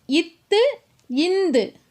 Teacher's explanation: நாவினுடைய நுனி மேல்வாய் பல்லினுடைய அடியை போய் பொருந்தி நிற்குது.